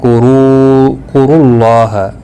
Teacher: رو پیش کی وجہ سے پر پڑھا جائے گا، اور اللہ کا لام یہاں پر پر پڑھا جائے گا